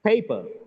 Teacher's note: Paper, the first syllable is stressed. PA is stressed.